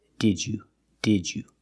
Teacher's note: It's not did you, it's did you. So we pronounce the first D as a real D. D-d-d-ju. The second D changes to the j sound, like juice and jump.